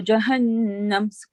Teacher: keep the noon sound in for 2 seconds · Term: gunna sound